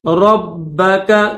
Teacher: با کے اوپر تشدید ہے تو با کو سختی کے ساتھ پڑھیں گے